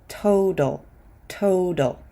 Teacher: leave that t alone we'll pronounce it as a t but the second T is actually a d